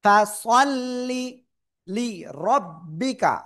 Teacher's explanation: রর উপরে জবর মোটা আওয়াজে